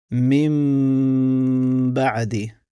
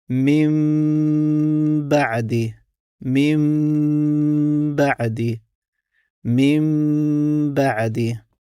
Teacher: Znači nećemo učiti min, nego umjesto n učimo m. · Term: m kroz nos